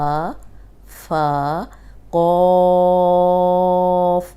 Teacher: موٹا حرف ہے لیکن زبان ہونٹ گول نہیں ہوں گے، موٹا پڑھیں گے اس کو۔